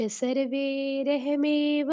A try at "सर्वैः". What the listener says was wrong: सर्वई, सर्वे नहीं है, सर्वई दो मात्राएं हैं, ठीक है, उसका ध्यान रखो।